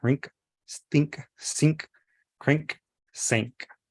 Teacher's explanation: You can barely hear the N but it's still there. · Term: the NK